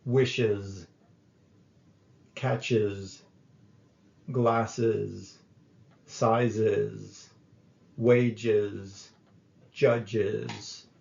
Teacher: the final s adds an extra syllable to the noun